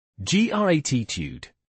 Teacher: The t sound is soft, almost a d sound. >> Yes, especially in American English, it's a soft d. · It's stressed on the first syllable.